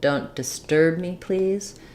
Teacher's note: the stress comes on the word disturb and the stress of disturb comes on the second syllable